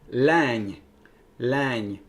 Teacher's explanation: It is lang, lang. It's a long front vowel, an L, and it ends with palatal nasal